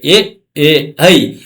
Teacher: ಕಂಠತಾಲವ್ಯ, ಕಂಠ ಮತ್ತು ಕಿರುನಾಲಿಗೆ ಸಹಾಯದಿಂದ, ಇಲ್ಲಿ ನೋಡಿ ಕಂಠ, ಇಲ್ಲಿ ನಮಗೆ ನಾಲಿಗೆ ಇದೆ, ಅದು ಕಿರುನಾಲಿಗೆ ಅಂತ ಒಂದಿದೆಯಲ್ಲ ಅಲ್ಲಿ ಹುಟ್ಟುತ್ತೆ, ಅದಕ್ಕೆ ಎ ಎ ಐ ಇವು ಏನಪ್ಪಾ ಅಂದ್ರೆ ಕಂಠತಾಲವ್ಯ.